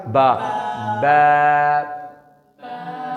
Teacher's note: اس کو ایسے نارمل آواز نکالیں کہ دونوں ہونٹ بس ٹچ ہوں تو با کی آواز نکلے گی